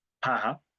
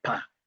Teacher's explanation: Both of them are voice in terms of state of the glottis. Both of them are bilabial in terms of place of articulation. Both of them are plosive in terms of manner of articulation.